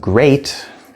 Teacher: Or we have great, which is also spelled EA, but it's pronounced A, which is a diphthong, two vowel sounds combined into one.